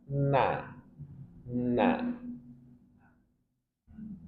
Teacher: nun ujung lidah dengan gusi dua gigi seri atas · Nun, ujung lidah dengan gusi 2 gigi seri atas. Na, na. Dan dia na yang ringan, bukan na atau nah, tapi na yang ringan.